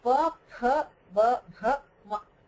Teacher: All of them pronounced using both the lips.